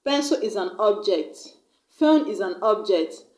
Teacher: When I use that word as a noun, like pencil is an object, phone is an object, I'm going to stress on the first syllable